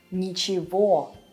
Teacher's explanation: in the word ничего we write g, but we pronounce it as v.